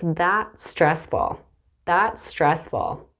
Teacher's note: notice that the S at the end of that blends in with stressful